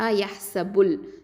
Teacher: நடுவில் இருக்கக்கூடிய ஹம்சத்துல் வசல் உச்சரிக்க மாட்டோம். யஹ்ஸபுல். இந்த ப அப்படிங்கிறது வந்து ஷஃபத்தான், உதடு எழுத்து.